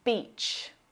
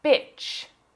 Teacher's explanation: If you mispronounce this long vowel sound and use the short I sound, you'll say bitch.